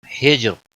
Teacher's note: جیم ساکن پر قلقلہ ہوگا، را وقف کی صورت میں باریک پڑھا جائے گا، کیونکہ را کے پچھلا حرف ساکن ہے، اس سے پہلے زیر ہے، اس لیے را ساکن وقف کی صورت میں باریک پڑھا جائے گا۔